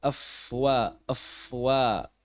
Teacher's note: huruf wau sendiri dikeluarkan seperti pada saat kita mengucapkan huruf W dalam bahasa Indonesia yaitu memonyongkan bibir sebagaimana saat membaca dhammah dan mengangkat pangkal lidah. Nah, ini penting mengangkat pangkal lidah untuk menyempurnakannya.